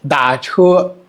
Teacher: Da is the third tone. And chu is the first tone.